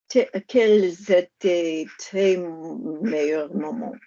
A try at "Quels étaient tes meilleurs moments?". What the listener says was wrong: Go again, get rid of the T a little bit. Quels étaient tes meilleurs moments? Close mouth.